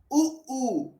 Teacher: जैसे ही आप उ ऊ कहेंगे आपके होठ बाहर निकलेंगे, जीभ अंदर खींच जाएगी। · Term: पश्च स्वर